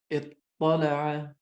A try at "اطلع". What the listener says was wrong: اطلع not اطلع. اطلع الغيب. We have two ta here and we merged them together.